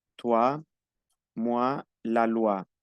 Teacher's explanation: la o y la i se pronuncia ua una u y una a